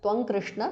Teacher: because of sandhi anuswara changes to ng there which is the nasal of the kavarga